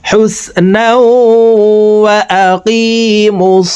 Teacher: দেখুন তানবিনের পর ইদগামে বাগুন্নার 4 হরফের একটি হরফ ওয়াও আসছে, এই কারণে 2 জবর ওয়ালা নুনটি তাসদিদ ওয়ালা ওয়ার সাথে গুন্নার সহিত মিলাইয়া পড়তে হবে।